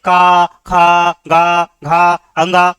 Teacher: और ये कंठी है, ये डायरेक्ट बेटा हमारे कंठ से निकल के आते हैं